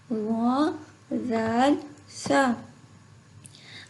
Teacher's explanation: زبان کی نوک سامنے اوپر والے 2 دانتوں کے کنارے سے ادا ہوتی ہے۔ کنارے سے اس طرح سے ادا ہوں گے کہ آپ نے اپنی زبان کو تھوڑا سا باہر نکالنا ہے اور دانتوں کے کنارے کو لگانا ہے۔ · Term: نرمی والے حروف